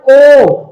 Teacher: ओ होठों की आकृति गोल हो रही है